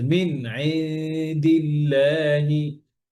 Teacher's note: না, মিন গুণনা নাই, মিনি গুণনা নাই। নুন সুকুনের পরে আইন আসছে, ইজহার হবে, নুন ক্লিয়ার।